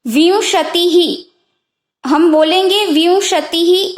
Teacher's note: ती ह्रस्व ई है, यानी छोटी ई है, और पीछे विसर्ग है, यानी जो दो डॉट है ना, जैसे कि विंशति ही, हम बोलेंगे विंशति ही ऐसे, तो ती के पीछे 2 डॉट है, उसको विसर्ग कहेंगे।